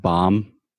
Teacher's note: there's no B at the end I mean there is but we don't pronounce it